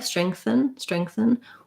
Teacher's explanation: So it's the same kind of thing where I might have a schwa there or an there. It's a very short, reduced vowel in strengthen.